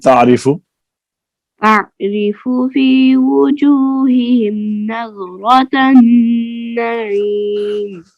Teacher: لام تعریف کا ادغام ہوا نون میں